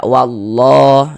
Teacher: Lafaz Allah sebelumnya ada harokat fathah, maka lafaz Allahnya dibaca tebal, dibaca tabkhim